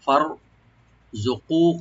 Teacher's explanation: ফা ওপেন রাখবেন, রাটাকে একটু মোটা করতে হবে এখানে। ফার জুকু, কফটাকে একটু ডিপ করে এক আলিফ টানবেন